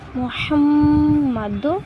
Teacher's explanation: இந்த இடத்துல குண்ணா செய்யணும் முஹம் சொல்லும்போது குண்ணா செய்யணும்